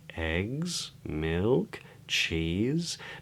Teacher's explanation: each item on the list is spoken with a rising intonation, eggs, milk, cheese, but then we would use a falling intonation, a downward intonation, which I'll talk more about in a moment, on bread to indicate that we've finished.